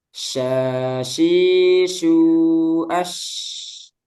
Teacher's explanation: Shin tafasyi menyebar udaranya di mulut.